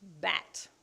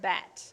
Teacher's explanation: you can feel that your throat is vibrating the whole time